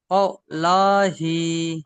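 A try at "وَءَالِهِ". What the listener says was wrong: ওয়াও লা নয়, ওয়াও, ওয়াও খাড়া জবর ওয়া ।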